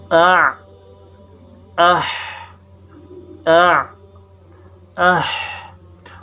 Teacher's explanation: جو حلق کا بیچ کا حصہ ہے اس سے 2 حرف اع، اح، اع، اح۔